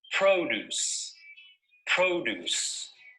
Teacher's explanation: notice that the stress is on the first syllable